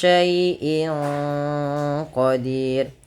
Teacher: suara tanwin pada lafal in disamarkan ke huruf qof yang mana qf termasuk huruf ikhfa. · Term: ikhfa hakiki